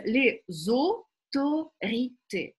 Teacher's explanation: здесь есть два звука «о». И вот первый звук – это закрытый «о», а второй – это открытый.